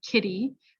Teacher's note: has a vowel before and after, so it becomes a D sound